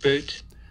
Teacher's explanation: this one's got a bilabial stop at the beginning, which is truly voiceless. So there's no voicing going on here during the stop closure, and there's a weak release burst. · there's no aspiration at all. It goes straight from this release burst to the voicing for the vowel. It goes straight to the formants.